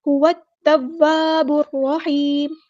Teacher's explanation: تا مشدد ہے تو اس کو دو بار پڑھیں گے، ہوت ایک بار ساکن کر کے ایک بار اس کی حرکت کے مطابق. ہوت التواب الرحیم، واو بھی مشدد ہے تو اس کو دو بار پڑھیں گے، الف مد آ گیا ہے تو مد اصلی کریں گے.